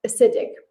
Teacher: the first sound there's a schwa sound